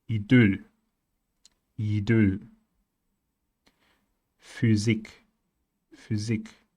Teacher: Even though it's counted as a consonant, it mostly produces a vocal sound, a vowel sound, which is the same as Ü.